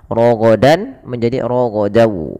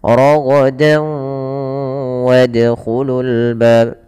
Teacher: Kalau huruf setelahnya waw, maka masukkan tanwinnya ke waw dan ditahan dan dibunyikan dengan huruf waw. Suara nunnya hilang. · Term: idgham bi gunnah